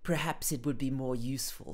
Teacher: it sounds like she's almost not opening her mouth fully when she speaks because she's trying to speak very precisely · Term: posh